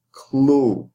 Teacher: And like the word when you say clue, oo at the end is open and it is stressed. So you cannot take the oo and make it shorter, like saying the word as clo.